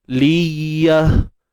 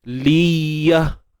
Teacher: Kat mana makhraj ya? Tengah lidah naik ke langit. Tapi jangan lekap Kalau lekat dia jadi syiddah nanti, tertahan suara.